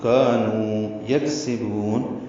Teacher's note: کاف ساکن پہ ہمس ہے، باریک پڑھا جائے گا، سانس جاری رہے گی